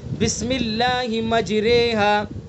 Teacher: را ممالہ یعنی وہ را جس میں امالہ کیا گیا ہو باریک ہوگی